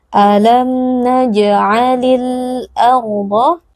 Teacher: Ada alif lam al-qamariyah, yaitu alif lam yang bertemu dengan salah satu huruf qamariyah, yaitu hamzah. Bunyi alif lamnya harus dibaca dengan izhar atau dengan jelas.